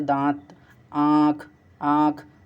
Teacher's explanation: अनुनासिक में क्या होता है, नाक से कम और मुख से अधिक सांस